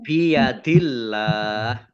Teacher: Allahnya dibaca tipis karena harokat di depannya kasroh